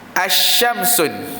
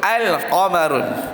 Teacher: Alif lam qamariyah, alif lam itu disebut.